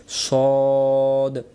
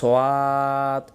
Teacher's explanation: মুখটা গোল করে বলতে হয় সদ, বলেন মুখটা গোল হয়। দেখেন আয়নার সামনে যায় দেখবেন সদ।